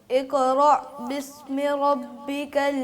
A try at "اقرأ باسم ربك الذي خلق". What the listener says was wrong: क़ाफ है ना, इसको आप कलकला नहीं कर रहे। इक़रा, इक़ इक़ क़ाफ जो है उसको कलकला करना है, लेकिन ज़्यादा भी नहीं। इक़रा बिस्मि रब्बिकल्लज़ी खलक़